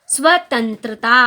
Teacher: जब मैंने बोला स्वतंत्रता तो सिर्फ नाक से आवाज निकल रही है।